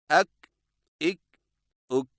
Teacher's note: काफ बारीक और बगैर झटके वाली आवाज। अदायगी के वक्त जुबान की जड़ को कौवे के करीब तालू पर लगाएं। मसलन अक इक उक।